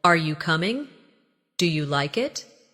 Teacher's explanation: Another important element is intonation when asking questions. In English, our voice usually rises at the end of a yes or no question.